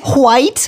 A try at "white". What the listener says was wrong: Why are you saying it like that? You're saying it weird. You're putting all the emphasis on the H.